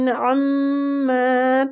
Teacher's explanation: وَمَا اللَّهُ بِغَافِلٍ عَمَّا تَعْمَلُونَ. اما میم مشددہ غنہ کریں گے اور کھینچیں گے میم کو